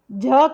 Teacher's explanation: झ कैसा वर्ण है सघोष महाप्राण